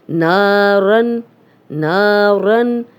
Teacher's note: اب نا الف مدہ ہے، 2 حرکات لمبا کریں گے